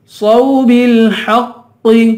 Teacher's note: ہا کو قاف کے ساتھ ملائیں گے، قاف کو پر پڑھیں گے. حق یہاں بھی ہوٹ گول کریں گے، دوسرے واؤ کو ایک الف کے برابر کھینچ کے پڑھیں گے.